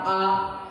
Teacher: आ बोलने में अ की अपेक्षा अधिक समय लग रहा। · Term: दीर्घ स्वर